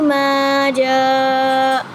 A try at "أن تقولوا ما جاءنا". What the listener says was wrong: जा लफ्ज पूरा नहीं था, ना तक पूरा लफ्ज था ये। अन तकूलू से पढ़े हम।